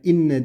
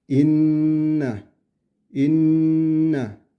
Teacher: Nun harfi bakın bu şedde oluyor. Nun harfi ve mim harfi şeddeli geldiği zaman 1,5 saniye boyunca kadar bu sesi genzimizde tutarız.